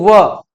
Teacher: जैसे व, हमने व पढ़ा तो व में हमारा निचला होठ ऊपर वाले दांतों से जाकर टकराया, होठ में परिवर्तन आया, साथ ही साथ दांतों में भी टकराया, तो उसे हमने बोल दिया दंतोष्ठ। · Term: दंतोष्ठ वर्ण, दंतु वर्ण